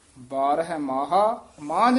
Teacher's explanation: ਮਾਹਾ ਕਹਿਣਾ ਇਹਨੂੰ ਮਾਹ ਨਹੀਂ ਕਹਿ ਦੇਣਾ ਇੱਥੇ ਯਮਕ ਲਾ ਦੇਣੀ ਹ ਥੋੜਾ ਜਿਹਾ ਰੁਕ ਕੇ ਬੋਲਣਾ